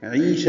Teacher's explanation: عیشہ میں عی یا مدہ ہے، یہ بھی 2 حرکات لمبا ہے ، عین وسط حلق سے ادا ہوگا اور یہ یا مدہ